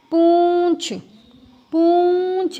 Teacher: जब हम पूंछ बोलेंगे तो नाक और मुंह दोनों से आवाज़ आती है, यहाँ बनेगा पूंछ, चंद्र बिंदु लगेगा।